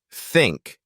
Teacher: A word like think uses the voiceless theth sound. We don't use our vocal cords for that. Just let the air stream out between your tongue and teeth.